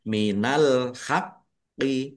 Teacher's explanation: minal haqqi alhaqqi alif lam qamariah ditandai lamnya dibaca sukun kemudian qof-nya dibaca dobel ada tasdidnya ditekan dan ditahan biar tampak dobelnya